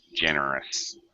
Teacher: this last syllable being a uh unstressed syllable, you want to use the schwa sound